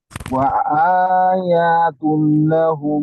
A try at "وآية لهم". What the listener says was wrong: ইয়াতে মাদ নেই, ইয়াতে মাদ নেই। وآية لهم